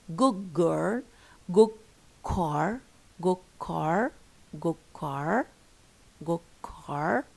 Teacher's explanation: So the D changed into a G before K and G.